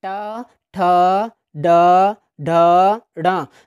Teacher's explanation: जब इनका दोस्तों उच्चारण करते तो हमारी जो जीभ होती है मूर्धा यानी मसूढ़े को स्पर्श करती है, इसलिए इनको मूर्धन्य वर्ण कहा जाता है।